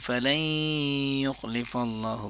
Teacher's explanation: ادغام مع الغنہ ہو رہا ہے کیونکہ نون ساکن ہے اور اس کے بعد یا ہے اور یا یرملون میں سے ہے۔